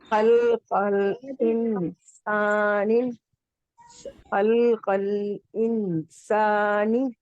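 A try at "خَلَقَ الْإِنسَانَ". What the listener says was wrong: رکیے وہ نام میں مسٹیک ہو گیا، کوئی بات نہیں، لیکن انسانی میں آپ کا اخفا غنہ پراپر نہیں سنائی دے رہا ہے. تھوڑی سی آواز کو روکیے.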